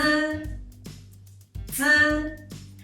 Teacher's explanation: Z is the affricative and unaspirated sound. The first thing you need to do when you pronounce Z is pressing the back of the upper teeth with the tongue tip.